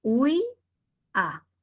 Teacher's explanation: La U con la I se unen y la I con la A se separan. En esa palabra hay ditongo y hay hiato.